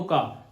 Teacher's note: का तो गले से निकल रही है ना आवाज, गले का मतलब कंठ निकल रहा है ना।